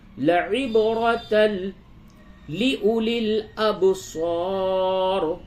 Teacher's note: لعبرۃ با میں قلقلہ اور را کو پر کیجئے